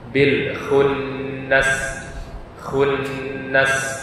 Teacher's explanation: Nun yang bertasydid maka harus ditahan dulu bacaannya dibaca dengan dengung